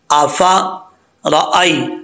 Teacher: रा के ऊपर ज़बर हो तो रा पुर पढ़ा जाता है, यानी मोटा पढ़ा जाता है। हमज़ा के बाद या आ रहा है तो ये या साकिन है, या साकिन से पहले ज़बर हो तो या मद्दा नहीं होता, या लीन होता है।